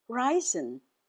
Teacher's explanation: R E I S E N. The stress is on the first syllable. Ry. Ryzen.